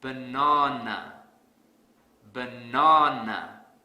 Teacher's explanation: because I don't stress the second syllable so to fix this I will stress the second syllable really hard